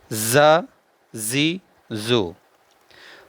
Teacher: जा को सीटी के साथ पढ़ना है जा जी ज और जाल को बगैर सीटी के पढ़ना है